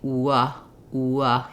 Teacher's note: Glide when I say it slowly W you can hear that it starts in that oo shape and it ends in the uh shape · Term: semivowel or Glide